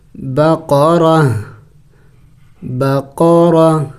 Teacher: تا دو زبر تن، بقرتن. دیکھیں وقف میں اس گولتا کو ہا سے بدلانا ہوگا